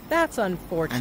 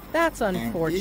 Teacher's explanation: And if you've guessed it correctly, you would have noticed that the intonation starts on the fore part of the word unfortunate.